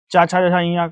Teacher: च वर्ग के उच्चारण स्थान क्या है तालू है